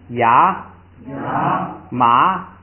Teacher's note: 读一下这个传统拼读法跟例词就完了。咱们来第19页，传统拼读法，读一下啊。卡拉卡，卡拉卡，枪啊枪，拉玛拉，卡那若空啊空，卡那若空啊空，撒起就苏啦苏，他去过听嘛听，下步是单词啊，牙马，这个ra的作用 后加字ra只是把它元音延长就完了